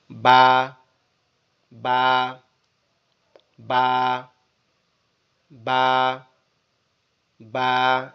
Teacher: আমাদের দুই ঠোঁট একসাথে লেগে থাকবে, একসাথে লেগে থেকে আলাদা হয়ে যাবে বা, বা, বা, বা, বা, এরকম ভাবে, ঠিক আছে?